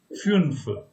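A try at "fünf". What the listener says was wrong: It is funf, like you. It's not you. It's umlaut you. So it becomes funf.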